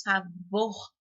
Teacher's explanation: o vor tem a maior intensidade aí